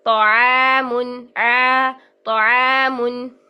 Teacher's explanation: تو دیکھیے طعام، طعام، او کریں گے، زبان کی جڑ بھی اٹھ رہی ہے اور عجیب سی ساؤنڈ پیدا ہو رہی ہے، جبکہ عین میں یہ کوالٹیز ہی نہیں ہے، زبان کی جڑ اور وسط اٹھانے کی کوالٹی ہے ہی نہیں، تو ہم اس کی عین کے لیے ادائیگی کے لیے ہم زبان کی جڑ اور وسط نیچے رکھیں گے